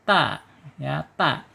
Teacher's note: ujung lidahnya menyentuh pangkal gigi seri atas